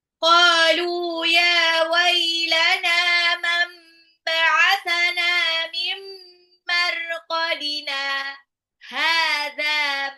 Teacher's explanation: itu adalah saktah, berhenti sejenak tanpa ambil nafas